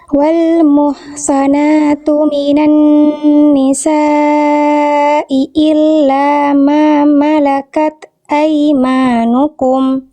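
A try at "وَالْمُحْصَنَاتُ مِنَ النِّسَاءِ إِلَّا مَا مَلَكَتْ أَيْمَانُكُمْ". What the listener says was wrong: Tenang, bagus.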